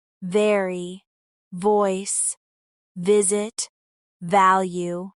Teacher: Let's focus now on the V sound, which is made by placing your top teeth on your bottom lip and letting your vocal cords vibrate.